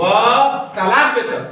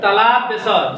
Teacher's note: इसका उच्चारण तालु से होता है, जीभ तालु में सट रही है तब इसका उच्चारण होता है